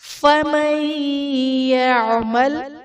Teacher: فَمَن يَعْمَلْ میں نون ساکن کے بعد حروف یرملون میں سے یا ہے، تو یہاں پر ادغام مع الغنہ کا قاعدہ ہوگا، یعنی نون ساکن میں ہم غنہ کر کے پڑھیں گے